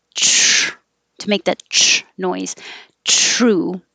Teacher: For the TR, you definitely want to make contact and drag your tongue back for the R.